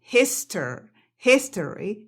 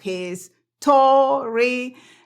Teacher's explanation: no pronuncies esa palabra con una O. Esta O ahí no es acentuada